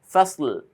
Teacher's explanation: লামের মাখরাজ যেটা জিহ্বার আগাটা উপরে তালুর সঙ্গে গিয়ে লাগবে, এইভাবে লেগে যাবে, ফাসল।